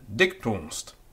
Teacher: Notice the elision of the final M in dictum, which is just a nasalized U. So dictum, that is followed by the E, and we can't have a vowel followed by a vowel like that.